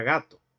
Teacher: en contraposición al oclusivo velar sordo nos encontramos con el oclusivo velar sonoro